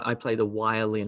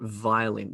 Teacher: a lot of South Indian speakers will make a sort of an error. Let's call it an error between v and w. For example, they say, I play the violin and not violin.